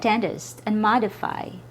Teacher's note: They both have a letter I, but the I's here have a reduced vowel sound, or the schwa.